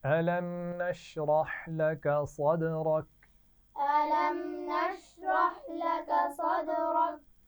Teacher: अलम के मीम पर गुन्ना नहीं होगा, क्योंकि मीम साकिन के बाद मीम या बा नहीं है